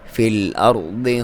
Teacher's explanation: ضاد کو موٹا پڑھیں گے، اور اس کے اپنے مخرج سے صحیح ادائیگی ہوگی